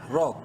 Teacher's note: را کو منہ بھر کے پڑھیں گے زبر کی وجہ سے، اور عین کو را سے ملاتے وقت سختی سے پڑھنا ہے۔